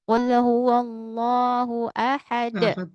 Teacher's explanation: Ahadu asalnya, tapi karena berhenti menjadi ahad ya. Ada pantulan di situ. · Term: qalqalah